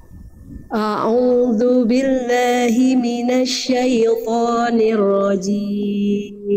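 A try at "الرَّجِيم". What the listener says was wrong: Hati-hati jimnya jangan cim, tapi jim. Tengah lidahnya disentuhkan ke langit-langit, jangan keluar percikan-percikan nafas. A'udzu billahi minasyaitonir rajim.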